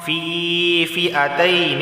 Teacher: تنوین کے بعد فا آیا ہے، اخفا والا غنہ ہوگا، یعنی زبان کی کو پر کے تالو سے نہیں لگے گی اور ناک سے 1 الف کے برابر آواز آئے گی، ناک سے 1 الف کے برابر آواز آئے گی۔